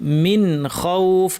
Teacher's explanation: নুনটাকে স্পষ্ট ইজহার করে পড়তে হবে গুন্না থাকবে কিন্তু গুন্নাকে বাড়াবো না মিন কেন এখানে কারণ নুন সাকিনের পরে খ এসেছে নুন সাকিনের